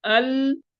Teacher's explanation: جب لام کو ساکن کرتے ہیں ال تو یہ را کے مخرج کی طرف بھی مائل ہو رہا ہے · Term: صفت انحراف